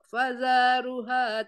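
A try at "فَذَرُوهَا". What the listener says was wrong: Jangan faza, tidak ada panjang juga. Jangan panjang-panjang.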